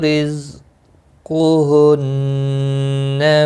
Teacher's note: قاف مستعلیہ ہے، پر پڑھا جائے گا، نون مشدد پر غنہ ہوگا، سین ساکن کو ہلانا نہیں، نون مشدد پر غنہ ہوگا۔